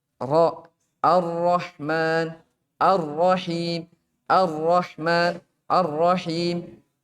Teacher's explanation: Kadang juga dia ro-nya tidak ada sifat takrirnya, tidak berulang.